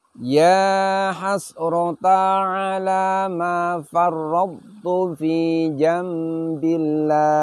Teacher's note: Perhatikan pada farradtu. Di sini pun qalqalahnya tidak tampak karena telah dileburkan ke huruf ta, namun isti'la dan idbak dari huruf to di sini masih ditampakkan.